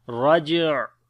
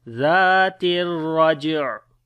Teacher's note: This ain we read from the middle of the throat.